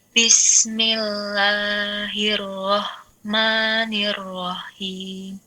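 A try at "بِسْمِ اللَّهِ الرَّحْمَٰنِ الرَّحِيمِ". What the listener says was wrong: Tolong diletakkan di tenggorokan bagian tengah. Ya, karena kalau letakkan tenggorokan bagian bawah, maka jadi huruf H. Roh. Yang betul ha. Bismillah.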